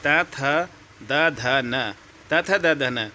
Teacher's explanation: तवर्ग वाले जो आपके होते हैं वो दंत्य से बोले जाएंगे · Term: दंत्य व्यंजन